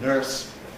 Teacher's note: in the west of England, in Scotland, in Ireland, people still pronounce an R. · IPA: [nɝːs]